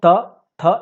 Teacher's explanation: लगता था कि वो उसका स्थान, उच्चारण का स्थान ही वही है, जैसे कि कंठ से क ख ग घ घ, त से जो दांत से क्या था, दांत के हेल्प से जब जीभ दांत से सटती थी तो त थ ये सब निकलता था